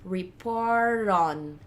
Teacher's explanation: É como se esse T começasse o R da próxima palavra.